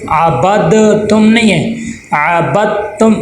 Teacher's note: با کو تا کے ساتھ ملا دیں گے۔ دال لکھنے میں آتا ہے لیکن پڑھنے میں نہیں آتا